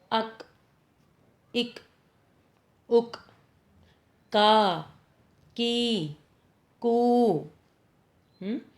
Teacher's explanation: پھر ہے کاف۔ زبان کی جڑ جب تالو کے سخت حصے کو چھوتی ہے تو کاف ادا ہوتا ہے